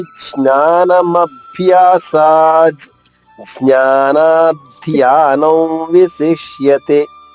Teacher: జ్ఞాన అనే అంటే నాలుక టిప్పు టచ్ అవ్వకుండా జాగ్రత్త పడి సరిపోతుంది